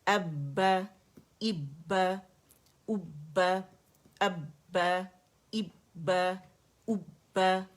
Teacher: آپ نے پہلے والے سکون پہ قلقلہ نہیں کرنا, آواز بند کرنی ہے